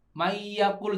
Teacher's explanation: Melebur dengan dengung. Ya, jadi nunnya ini enggak kedengaran lagi bunyinya. Ya, bukan enggak ada tapi melebur. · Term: Idgham bi gunnah